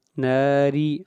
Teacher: را کو باریک پڑھا جائے گا اور را کا نیچے زیر ہے